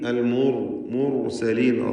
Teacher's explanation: റാഇനെ തടിപ്പിച്ച് തഫ്ഖീം ചെയ്യണം